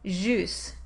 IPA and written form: ʒus (juice)